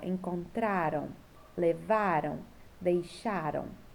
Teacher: a sílaba tônica que a sílaba mais forte é a penúltima encontraram levaram deixaram né é a sílaba mais forte é essa